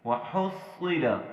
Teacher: یہاں حا کو ہم نے حلق سے ادا کرنا ہے اور صاد کو ہم نے موٹا پڑھنا ہے. وحصل، وحصل یوں نہیں پڑھنا، بعض لوگ اسے سین بول دیتے ہیں، بہت غلط کرتے ہیں.